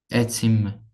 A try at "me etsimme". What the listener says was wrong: etsimme. Perfect.